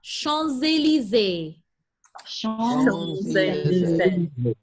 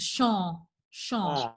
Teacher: the P is not pronounced. The M is nasal, so it leaves you just with champ.